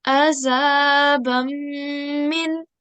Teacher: whilst doing 2-second nasal sound, join it to the mim mushaddat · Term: idgham